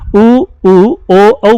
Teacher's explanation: उ ओ औ बोलेंगे तो होठ गोल हो जाएंगे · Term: वृत्तामुखी